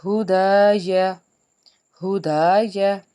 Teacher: ہا جو ہے حرف حلقی کا حرف، حلق کے نچلے حصے سے ادا کیا